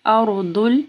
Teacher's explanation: رو جو ہے ساکن ہے، اس سے پہلے حمزہ کے اوپر زبر ہے تو رو جو ہے ہیوی ہوگی